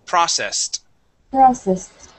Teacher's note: that e d at the end will make a t sound